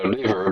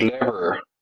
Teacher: the I sound sometimes pronounced as e so liver becomes lever